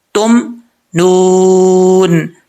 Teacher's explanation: वाव साकिन से पहले पेश हो तो वाव मद्दा होता है। यहाँ पे एक अलिफ की मिकदार भी लंबा कर सकते हैं।